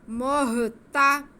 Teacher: میم پہ پیش ہے, میم کا پیش ہم جو ہے وہ ہا کے ساتھ ملائیں گے کیونکہ ہا ساکن ہے. مہ, آگے تا پہ زبر ہے, محتا, کھینچنا نہیں ہے, محتا. آگے اس کے بعد دال کے نیچے زیر اور ساتھ میں یا ساکن ہے, تو یہ یا مدہ ہو گیا.